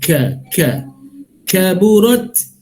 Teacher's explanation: sifat kaf itu sebelum berbaris ada bunyi hamas dan juga syiddah